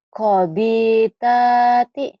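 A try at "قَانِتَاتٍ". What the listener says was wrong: Ini nun. Konita lagi.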